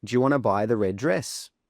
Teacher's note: we don't say do you, we say j. We don't say want to, we say wanna. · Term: connected speech